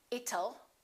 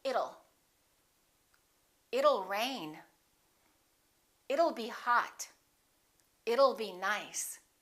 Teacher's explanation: one it will how does that sound don't say it toll let's change that T into a fast D and say it'll it'll rain it'll be hot it'll be nice